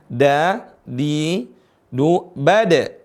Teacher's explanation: huruf Dal sekalipun di tengah kalimat dia tetap suara qalqalahnya mantul